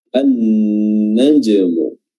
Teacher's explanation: An-najmu tsaqib, di sini juga ada alif lam ya, yang kategorinya adalah asy-syamsiyah ya. Huruf lamnya tidak disebut lagi, langsung melebur ke huruf nun yang bertasydid, an-najmu ya.